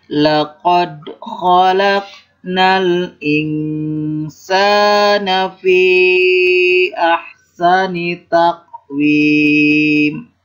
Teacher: Laqad itu disebut qalqalah karena ada huruf da berharkat sukun. Maka dibaca mantul ya.